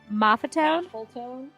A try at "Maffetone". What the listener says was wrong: there's no L there. No L. Maffetone.